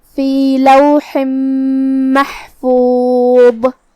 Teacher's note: ضا کی ادائیگی زبان کے سر اور اوپر والے دانتوں کے اندرونی کناروں سے ہے، ضا حروف التفخیم میں سے بھی ہے، تو ہمیں اسے بھاری آواز میں ادا کرنا ہے، ہم اس پہ رکیں گے تو جزم سے رکیں گے، تو ہمیں آخر میں ضا کو ظاہر کرنا ہے، فی لوح محفوظ۔